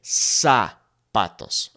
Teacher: the Z in Spanish is not Z, okay? It is S, like a snake, okay? So you wouldn't say zapatos.